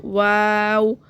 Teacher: واو میں ہونٹ بالکل گول ہوں گے